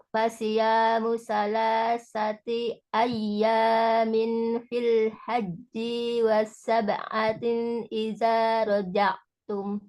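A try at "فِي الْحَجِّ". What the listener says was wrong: Perhatikan lagi harokatnya ya, pendek itu haji, jinya pendek gitu. Fil haji wasab'atin idza raja'tum.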